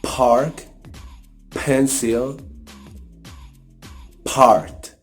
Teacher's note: produced by fully blocking the air in your vocal tract and then release this air as in explosions using your teeth or using your tongue or your lips. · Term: plosives